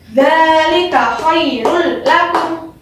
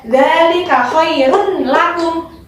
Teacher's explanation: Nah, ini hukum bacaan ini domah tanwin ya, bertemu dengan huruf lam, maka dileburkan juga, dibaca satu ketukan. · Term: idgham bilang guna